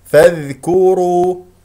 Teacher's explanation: هكذا انتقلنا من الفاء المفتوحه الى الذال لانه لدينا همزه وصل الكاف والراء مضمومه الشفتين فيها وفي الواو والراء انتبه انها مفخمه لماذا لانها مضمومه